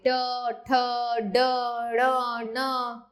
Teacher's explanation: मूर्धन्य, कठोर तालु के अगले भाग से।